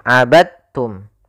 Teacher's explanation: maka diidgamkan dalnya kepada huruf ta sehingga dibaca dengan huruf tanya langsung. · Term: diidghamkan